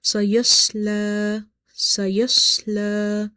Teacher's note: Try not to make lam heavy in order to pronounce swad heavy. Because sometimes when we are trying to make swad heavy, we can make lam heavy as well. · swad is from the musta'aliya, heavy letters. So we will make it quite heavy. Sayas, sayas, but lam is light.